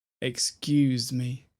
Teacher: the emphasis here is always on the ooze